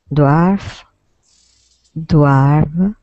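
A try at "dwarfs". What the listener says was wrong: We need an S sound at the end here. So it would be dwarf with an F, and then dwarves with a V and a voiced S.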